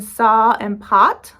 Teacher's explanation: In many parts of the country, there is no distinction between the sounds in saw and pot. Like where I live, those sound exactly the same.